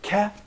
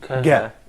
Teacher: Ka is unvoiced and Ga is voiced. Pronounce Ka and Ga several times, paying attention to how your voice changes when you say Ga.